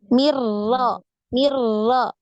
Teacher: Mir Mir gitu nah dia tetap lurus ke depan ya karena makhrajnya itu di awal punggung ujung lidah nempel di gusi gigi seri atas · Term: huruf ro